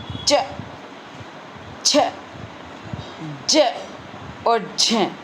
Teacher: चिपके रहेंगे ये इसलिए इनको कहा गया है स्पर्श संघर्षी यानी स्पर्श तो कर लेते हैं ये लेकिन बड़े संघर्ष के साथ ये बड़े संघर्ष के साथ बाहर निकलते हैं